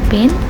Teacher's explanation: In pin, the P is pronounced with a little puff of air or called expiration.